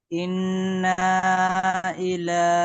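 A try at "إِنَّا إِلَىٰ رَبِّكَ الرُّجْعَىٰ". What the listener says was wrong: ইন্না টান হবে না।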